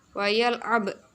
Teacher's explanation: lafadz ba yang dibaca sukun ini termasuk bacaan qalqalah sughra di mana ada huruf qalqalah berupa ba yang matinya asli.